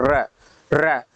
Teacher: लुंठित का मतलब जैसे बोलना है र, र, तो ये क्या है, जीवा जो आपका क्या एक गुच्छे जैसा बन रहा है ना, लुंठित हो जा रहा है